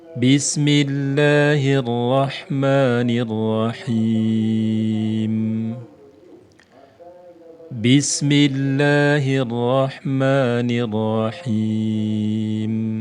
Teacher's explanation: jadi lafzul jalalah walaupun tidak ada tanda madnya tetap harus dibaca panjang Mad thi'i dua harakat